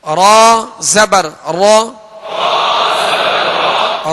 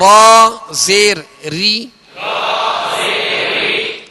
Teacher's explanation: रा पर जबर और पेश हो तो रा को पुरी यानी मोटा पढ़ेंगे और रा के नीचे जेर हो तो रा को बारीक पढ़ेंगे